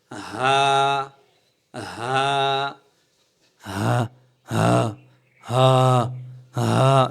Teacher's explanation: হা হরফটি হচ্ছে এক আলিফ টান হবে কন্ঠের শুরু থেকে সোজা আওয়াজ বের হয়ে আসবে